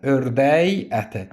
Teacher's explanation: Saitlə başlayan şəkilçi söz gələndə isə k-nı y tələffüz edəcəksən